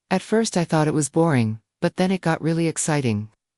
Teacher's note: He would lower his voice on boring and raise it on exciting to reflect the change in mood.